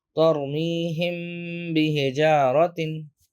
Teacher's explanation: we can do an ikhfa'u shafawiyun, which is a concealment with gunna. If meme sakin is followed by a ba, we do ikhfa with gunna.